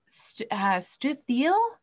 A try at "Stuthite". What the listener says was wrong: Actually, Stuthite, so there should be a T at the end, but that's all good.